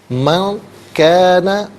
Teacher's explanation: من کان، من میں نون ساکن ہے، اس کے بعد کاف جو ہے وہ حرف اخفا ہے، تو نون ساکن کو اخفا کے ساتھ پڑھیں گے، یعنی ناک میں آواز لے جا کر گنگنانا اخفا کہلاتا ہے۔